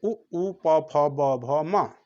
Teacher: ओष्ठ जिसका उच्चारण ओठ से होता है, जिसको ओठ से, ओठ के संकुचन से होता है